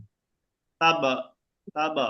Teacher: আমি বললাম যে বা সাকিন হওয়ায় কলকলা হবে